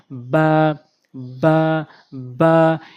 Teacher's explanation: এরপর হচ্ছে বা, দুই ঠোঁটের ভেজা অংশ মিলিয়ে, দুই ঠোঁটের দুইটি অংশ রয়েছে, একটা হচ্ছে ভেজা অংশ আর একটা শুকনো অংশ, দুই ঠোঁটের ভেজা অংশ মিলাবেন বা বা বা।